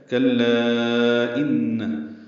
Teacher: کاف باریک لام سے ملائیں گے، لام مد منفصل ہے، کلا ان حمزہ دوسرے کلمے میں آنے کی وجہ سے مد منفصل بنی ہے، ان میں نون مشدد غنہ ہوگا